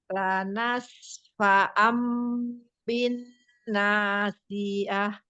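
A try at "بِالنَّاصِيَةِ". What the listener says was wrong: Kodnya kita tebalkan dikit lagi ya Umi. Bin nasiyati. Kodnya hati-hati biar tidak seperti huruf sin ya Umi. Bin nasiyati. Bin tasdidnya dengung ya Umi. Bin nasiyati.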